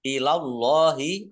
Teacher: Ilallahi, Allahnya dibaca tebal karena harokat di depannya fathah.